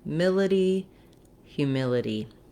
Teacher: So the word humility has the stress on the middle syllable, mil. That means that syllable will be long and stretched, and the hu and the itty syllables are going to be short, and they may have, in this case, they don't have reduced vowels except for one.